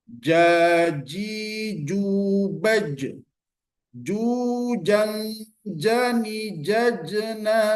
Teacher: Jim bagian tengah lidah menyentuh bagian langit-langit bagian atas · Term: huruf Jim